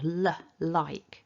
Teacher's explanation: So when we make the L sound at the beginning of a word like, the tongue moves forward, l. I touch the tip of the tongue to the top teeth, and then as I release the sound, the tongue sort of flicks out to release that sound, l, like. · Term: clear L